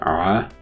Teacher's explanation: which is you see a voiced pharyngeal fricative